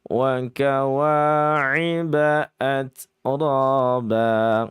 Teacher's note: Atranya dalam kondisi tafkhim tebal karena sebab fathah.